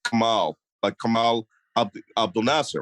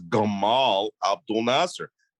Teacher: In Egypt, the letter Q is turned into a G, right?